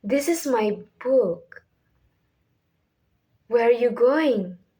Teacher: start higher and let your voice naturally go lower at the end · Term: falling intonation